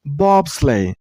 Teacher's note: this word has only two syllables bob sleigh and use a stress on the first syllable